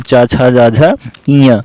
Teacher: चा वर्ग का उच्चारण स्थान क्या होता है, चा छा जा झा इया, इसका जो उच्चारण स्थान होता है वो तालु होता है